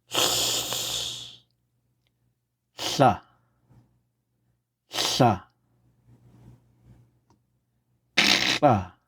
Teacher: So your tongue is in the same location as if you were going to make the L sound, like in la. But instead of la, you wouldn't voice. You'd have your tongue there right behind your teeth. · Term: unvoiced L